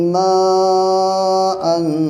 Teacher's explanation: تو یہاں پہ مد متصل ہے، اور اس کو کم سے کم 3 سے 4 الف کے برابر کھینچیں گے